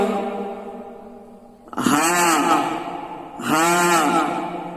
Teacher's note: এই হা উচ্চারণের সময় কোনো চাপা যাবে না, তা হালকা ভাবে বলতে হবে। গলার একেবারে কণ্ঠনালীর নিচের ভাগ থেকে উচ্চারণ হবে হা, হা, চাপা যাবে না।